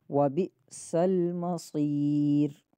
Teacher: صاد بھی سیٹی والے حروف میں سے، لیکن صاد کی سیٹی موٹی ہوگی، را باریک ہوگا یہاں پہ۔